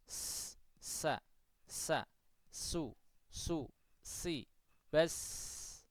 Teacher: Karena memang udara itu hanya sekedar mengalir. Ya, pita suaranya terbuka sehingga mengalir begitu udaranya. · ketika mengucap huruf-huruf hamas itu pita suara itu apa? Tidak bergetar